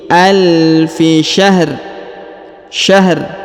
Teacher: kita sukunkan atau kita matikan huruf ro ya karena berada di ujung ayat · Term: huruf ro sukun